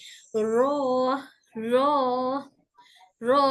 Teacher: करना है ऐसे नहीं बस हल्का सा र र हल्का वाइब्रेशन र का मखर जबान के आगे से होता है जब जबान ऊपर के गम से लगती है र बोलकर महसूस करें कि जुबान का आगे का हिस्सा हल्का · रॉ तब निकलता है जब जुबान का किनारा और ऊपर के हिस्से, ऊपर का हिस्सा ऊपर के चार आगे के दांतों के मसूड़ों को छुए। सामने की चार दांतों के मसूड़ों, ये दिखाई दे रही है हमारी जबान। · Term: हर्फ रो